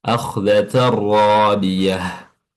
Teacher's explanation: Idgham maksudnya adalah idkhal atau memasukkan. Jadi tanwinnya tan dimasukkan langsung ke huruf ra, · kita baca jelas huruf mimnya atau ee dinamakan sebagai izhar izhar syafawi ya. Izhar jelas yang keluar dari syafah atau bibir. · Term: idgham bila gunnah